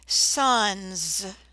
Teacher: the word son and we've added s to the end sons notice that in this word the S sounds like a Z